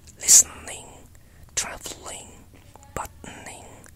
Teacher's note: Medial syllabic consonants, n, l, r, occur in RP English.